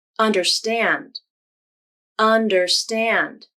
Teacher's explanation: The first syllable, un, has some stress too. It's stressed more than the second syllable, der, but not stressed as much as the third syllable, stand. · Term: secondary stress